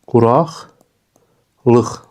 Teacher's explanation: Yəni q samiti x kimi tələffüz olundu bu sözlərdə.